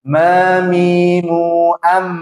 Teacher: merapatnya dua bibir atas dan bibir bawah disertai dengan gunnah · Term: huruf mim